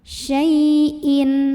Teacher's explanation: ada huruf lin karena ada ya sukun sebelumnya fathah, maka bacanya cukup dilembutkan